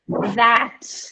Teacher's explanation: In Irish, this t sound at the very end of the word would sound like more like ch. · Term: t ending pronounced like che